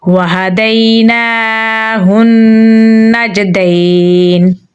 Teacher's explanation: नून को जीम के साथ मिलाएंगे क्योंकि जीम पे जज़म है, जीम हरूफ कलकला में से है तो यहाँ पर हम कलकला करेंगे · को या के साथ मिलाएंगे क्योंकि या के ऊपर जज़म है, यहाँ पर आयत लगाने की सूरत में मद्दे लीन होगी तो यहाँ पर हम इसे 2 से 3 सेकंड लंबा पढ़ेंगे